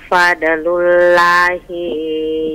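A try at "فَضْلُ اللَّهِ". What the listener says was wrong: Bukan fadl, kalau fadl itu huruf dal. Fadlullah, dalika fadlullah, bukan fadlullah. Jangan dipantul ini.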